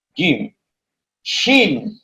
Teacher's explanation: Kemudian asfadu sudah, wal wastu, adapun tengah lidah, berarti tengah lidah, kemudian maju ke depan, yaitu ke tengah lidah. Tengah lidah yang disebut dengan makhraj wasatul lisan itu mengeluarkan tiga huruf, yaitu fajibus shinu ya, yaitu huruf jim, shin, dan ya.